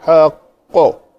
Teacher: काफ को हमने पेश को हटा के साकिन किया तो कलकला करेंगे